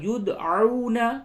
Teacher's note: دال میں قلقلہ ہوگا